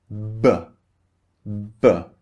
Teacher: First, the lips are closed and then we release the air. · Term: voiced B